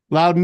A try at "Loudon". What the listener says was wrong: You put a W in there because it's your Boston accent or your Mass accent. You don't always pronounce things the way they're spelled. I hear loud. Loud.